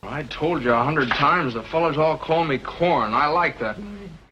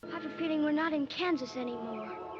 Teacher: there was plenty of rhotic middle American speech, from stars like James Stewart